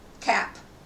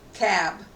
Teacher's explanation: Vowel length before a voiceless [p] is shorter than before a voiced [b].